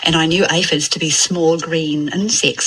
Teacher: And one thing that happens in New Zealand English is that the cap I has moved back to be more of a barred I